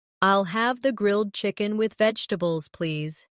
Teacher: The main stress is on grilled chicken and vegetables.